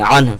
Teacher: ہا کے اوپر کا پیش ختم ہو جائے گا، صرف ہا بچے گا تو عنہ پڑھیں گے.